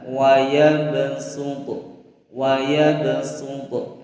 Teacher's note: Nah, maka membacanya adalah wayab sutu, wayab sutu. Nah, shadnya diganti dengan huruf sin. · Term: huruf shad dibaca sin